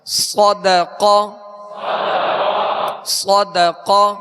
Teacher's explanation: صاد اور قاف دونوں پر پڑھیں گے، حروف مستعلیہ میں سے ہے، لیکن اس بات کا خیال رکھیں کہ ہونٹ گول نہ ہو. حروف مستعلیہ کو ادا کرتے ہوئے ہونٹوں کو گول کرنے کا سہارا نہ لیا جائے، بلکہ ہونٹ گول کیے بغیر ان کو پر پڑھنا ہے.